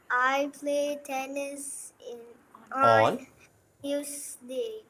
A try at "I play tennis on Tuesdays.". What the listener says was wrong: Pronounce the S. Tuesdays. Tuesdays.